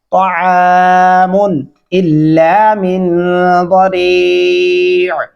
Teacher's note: और यहाँ पे ताआमुन नहीं पढ़ना, त्वा पढ़ना है, ताआमुन इल्ला मिन ज़री। इस मीम के ऊपर गुन्ना नहीं करेंगे, क्योंकि आगे अलिफ है हरूफ हल्की में से।